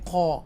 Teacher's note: آپ یہاں پر دیکھ سکتے ہیں کہ یہ حمزہ ہے حرکت میں اور یہ لام ساکنہ کے ساتھ ملا، ال کی آواز آئی، اور یہ حروف مستعلیہ میں سے قاف ہے، اس کو بولڈ پڑھیں گے